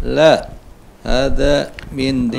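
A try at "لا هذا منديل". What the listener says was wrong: La-nya agak banyak. La.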